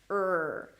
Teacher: Now in Arabic, the R is trilled in comparison to American English where the tongue pulls back for the R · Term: American R